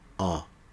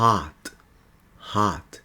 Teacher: é um A dos lábios arredondados, semelhante ao nosso O.